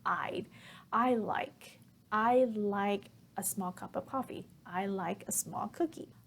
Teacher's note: Now, here I want to point out that when we're speaking, we tend to reduce or contract I would